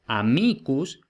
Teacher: amicus tiene el acento en la I en el nominativo